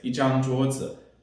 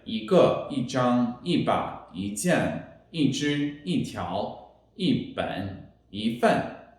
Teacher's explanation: E is followed by a zhang, which is a first tone, so the E changes to a fourth tone